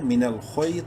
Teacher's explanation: خوا یا زبر خوئی، خوا کو منہ بھر کے پڑھنا ہے لیکن شارٹلی کیونکہ یا لین ہے